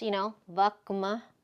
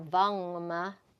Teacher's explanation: So again, it's just, vakma or vangma just makes a fluidity of sound because they're both nasals now instead of a guttural stop and then a nasal sound